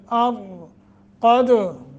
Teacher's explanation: क़द काफ को मोटा, दाल पे कलकला करना है, साकिन है।